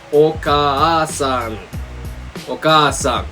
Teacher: Going back to the long vowels, for the ah sound, we just add an extra ah. So for example, oka-san is mother or mom.